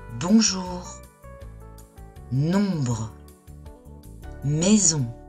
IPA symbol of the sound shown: ɔ̃